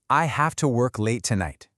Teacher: Hear that little drop on tonight. It tells the other person, "This is a complete thought. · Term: statement drop